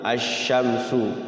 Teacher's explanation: Jadi langsung ke huruf setelah al-nya. Asy-syamsu berarti dia al-nya enggak dihidupin tuh, lam sukunnya enggak bunyi al. Jadi langsung ke sya. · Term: al-samsiyah